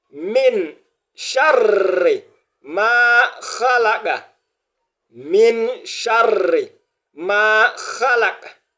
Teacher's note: Donc à cause de cette encore, la présence de tchada, on doit avoir l'impression comme si le R est deux fois au cours de la lecture. Donc, min sharri, on doit doubler à cause de cette voyelle longue, on l'a déjà vu.